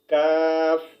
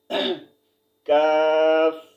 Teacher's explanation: काफ जुबान की जड़ और हलक के सख्त हिस्से से अदा होते हैं